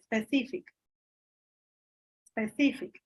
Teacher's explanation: Tú no pones la fuerza en la P.